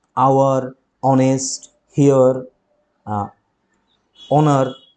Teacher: যেমন an আওয়ার, an অনেস্ট man, an হেয়ার, হেয়ার মানে হচ্ছে উত্তরাধিকারী, অ্যান অনার। তুমি দেখো প্রত্যেকেরই শুরুতে এইচ রয়েছে, এইচ রয়েছে, কিন্তু এদের কারোরই এইচের উচ্চারণই নেই